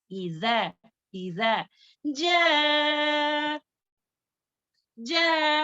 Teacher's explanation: ज मारूफ पढ़ेंगे, दोनों दांतों के दरमियान थोड़ी जुबान बाहर आनी है यानी कि सनाया उलिया के ऊपर के दांतों के किनारे पर हमारी जुबान की नोक लगना है। इजा, इजा, जा, जा मद मुत्तसिल है।